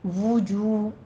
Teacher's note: وجو، دونوں جگہوں پہ آپ نے ہونٹ گول رکھنے ہیں. جو میں واو مدہ بھی ہے اس لیے ذرا سا آواز کھینچنی ہے، 2 کاؤنٹ کرنے ہیں